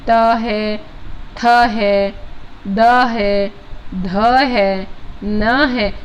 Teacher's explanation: दंत्य वर्ग जो है वो त वर्ग है, दांत को स्पर्श करने वाला